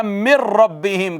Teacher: نون کا را میں ادغام ہوا